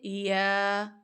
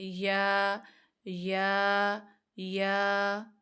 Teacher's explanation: ये जीम और शीन से बहुत कम जाके तालु से लगता है, ये स्पेस बाकी रहती है तालु और ज़ुबान के दरमियान, और अंदर से हवा पास करके बाहर आ रही होती है, ठीक है।